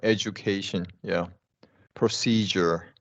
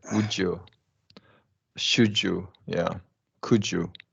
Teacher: instead of Tu we're talking about du and instead of CH we're talking about J